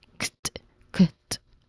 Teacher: So the vowel sound here is the short E sound, as in bit or sit, and then the final consonant cluster, CT, it is voiceless. You know, this is voiceless stop sound. It's followed by a voiceless stop sound also. It creates a crisp KT sound. Kt, kt. So you combine the sounds of K and T.